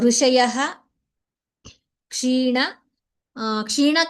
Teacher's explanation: ವಿಸರ್ಗ ನಂತರಂ ಕ್ಷ ಅಸ್ತಿ ಅತಃ ಸಂಪೂರ್ಣ ವಿಸರ್ಗಂ ವಕ್ತವ್ಯಂ